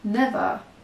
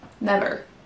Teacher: ça va se terminer avec un son schwa, donc un E, on va entendre never, et on n'entendra pas de R, alors que les Américains vont prononcer ce R.